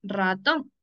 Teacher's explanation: la mayor fuerza de voz está en la última sílaba es una palabra aguda